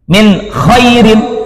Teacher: Izhar halki karena bertemu dengan salah satu huruf yang 6 termasuk hurufnya huruf tenggorokan